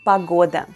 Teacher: once again the letter o is unstressed and pronounced as a